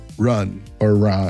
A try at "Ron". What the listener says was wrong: Just say it like you're saying the name Ron, like a guy named Ron. Just pronounce it like that. Ron. Ron. Like a soft A. Not Ran. Ron.